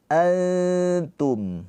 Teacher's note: ditahan 2 harokat dengan cara lidah kita mendekat ke huruf ta. Mendekat, jangan ditempelin. Kalau ditempelin dia nanti jadi izhar antum, jangan gitu. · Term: ikhfa hakiki